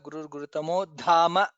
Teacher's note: Dha is Mahaprana there. Some people say Dhamaha.